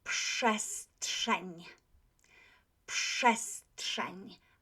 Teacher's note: Because the P, letter P, is unvoiced, the RZ becomes SZ. So this P letter influences the R.